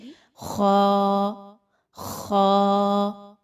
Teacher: ख जो है वो हलक से ही अदा होता है। और हलक के शुरू के हिस्से से जो मुंह की जानिब है। गौर करें तो बिल्कुल शुरू के हिस्से से आवाज निकलेगी। · خا جو ہے وہ حلق سے ہی ادا ہوتا ہے، اور حلق کے شروع کے حصے سے جو منہ کی جانب ہے، غور کریں تو بالکل شروع کے حصے سے آواز نکلے گی خا، خا۔